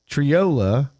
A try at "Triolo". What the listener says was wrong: Trollo. There's an O at the end.